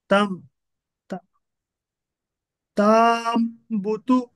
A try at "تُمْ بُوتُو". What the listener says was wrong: نہیں کھینچنا نہیں ہے نا، متحرک کو نہیں کھینچیں گے ہم. تم. ایسا. تم بوتو. تم بوتو.